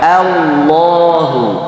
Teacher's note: Jadi a-nya tuh memang pertengahan antara bunyi a dan e.